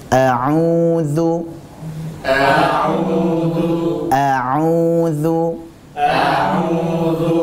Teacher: menjadi fokus kita kali ini adalah tentang wau sukunnya Uya itu au kita berusaha alirkan lewat rongga mulut